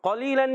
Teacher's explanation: قاف کا مخرج ہے زبان کی جڑ تالو کا نرم حصہ